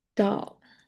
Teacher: the back of the tongue rises towards the soft palate. So the air sounds more darker in a sense, and it's more common to be positioned at the end of the word or before another consonant.